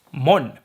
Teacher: However, it can also go one step further and the O gets dropped, the last O. So we get morn. And there R meets N. So we get the retroflex N here.